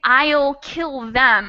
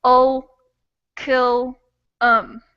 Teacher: we turn almost all those vowels into this this throaty uh sound